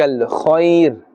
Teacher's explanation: Kha has a fatha, and kha, as you know, is part of the huruf musta'aliyah. This must be pronounced with that full mouth.